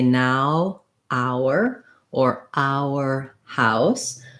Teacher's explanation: first of all if we just look at our and are the difference between the two words is that our has the au diphthong so this is the same diphthong as in words like house · the difference between the two words is that our has the ow diphthong